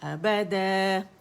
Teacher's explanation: دو count کھینچیں گے، مد عوض بنے گی